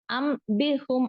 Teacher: நூன் சாக்கினுக்கு அப்புறம் வந்து letter பா வந்துச்சு அப்படின்னா அந்த நூன் சாக்கினை மீமாக மாற்றி ஓத வேண்டும்